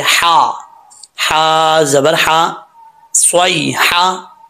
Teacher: اس ہا کا تعلق حلق کی طرف ہے، سینے کی طرف نہیں ہے، تو حلق کی طرف اس کا تعلق ہونے کی وجہ سے جو ہے اس کو باریک پڑھیں گے۔